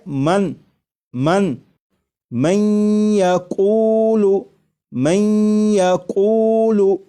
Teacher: یہاں پر دیکھیے گا یہ نون ساکن ہے، نون ساکن کے بعد جب یا آ جائے تو نون ساکن کو یا میں ادغام کر کے پڑھیں گے، ملا کر پڑھیں گے، اور نون ساکن کو یا میں ادغام اس طرح کریں گے کہ غنہ بھی ہو · یہ نون ساکن کا یا میں ادغام بھی ہو رہا ہے، اور ادغام اس طرح ہو رہا ہے کہ غنہ کے ساتھ